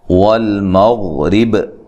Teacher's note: غین کو موٹا ادا کرنا ہے، ٹھیک ہے، لیکن غین کو ہلانا نہیں ہے